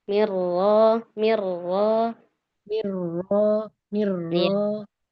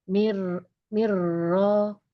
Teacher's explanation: Jadi getaran takrirnya di awal ya. Suaranya di awal takrirnya.